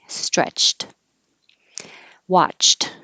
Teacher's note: stretch is voiceless so it'll look like ed but it'll sound like a t